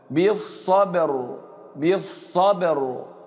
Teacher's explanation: بالصا والباء ساكنه ومقلقله ومرققه. بالصبر، اوعى تقول بالصبر، صبر لا، رقق الباء.